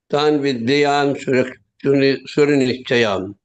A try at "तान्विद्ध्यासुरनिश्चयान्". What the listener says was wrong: Not vidyan. Okay. Tan vidyasura nishchayan. Vidya.